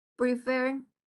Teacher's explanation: la mayor fuerza de voz está al último, donde está la consonante, vocal, consonante, chicos.